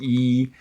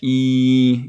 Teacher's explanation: hopefully you can feel that e your tongue is up there that's a high vowel